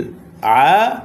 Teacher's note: আইনের উপরে খারাজবর আসার কারণে এক আলিফ টান হবে